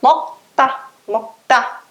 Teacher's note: o K vai puxar um som mais forte. Vai ficar mokta. Ele vai fortalecer o T seguinte. Vai ficar mokta, mokta.